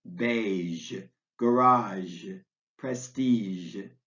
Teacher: words with a G that's pronounced zh, like the middle consonant in pleasure